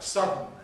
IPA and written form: ˈsʌdn̩ (sudden)